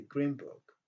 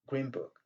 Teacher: green book, ça se termine par le son N. Et book commençant par le son B. Donc, on rejette le son, on transforme le son N en petit M.